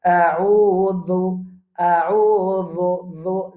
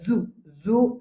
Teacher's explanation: Zal, zal, nous prononce d'un bout de la langue. Alors, nous, la langue, il dépasse nous les dents un petit guide.